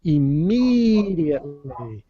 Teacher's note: we're going to stress the second syllable immediately we're gonna stretch out that sound more immediately instead of